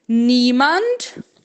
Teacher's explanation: Atenção para esse IE na primeira sílaba que a gente lê como um I longo.